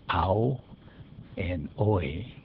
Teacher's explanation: some other sounds these are the dip thongs ow and oi you can hear that they are two sounds joined together as one